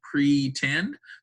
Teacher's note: So if it's open at the end of the syllable, like in pretend, the pre has nothing behind it in that syllable, and so it makes an open sound, makes a long E sound